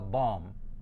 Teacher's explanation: There's no B at the end. I don't make a B sound at the end of this word. Yeah, so bomb.